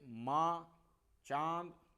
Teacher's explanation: तो अनुनासिक स्वर जिन ध्वनियों के उच्चारण में मुख के साथ साथ नाक से भी श्वास वायु निकलती है, यानी मुख के साथ साथ नाक से भी श्वास वायु निकलती है, जैसे माँ, चांद, तो आप बोल के देखेंगे तो देखो नाक से भी श्वास वायु निकलती है।